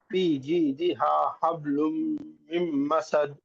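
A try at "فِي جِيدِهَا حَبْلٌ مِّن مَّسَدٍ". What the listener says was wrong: Very good. यहाँ पे आप खलखला अच्छा सा किए।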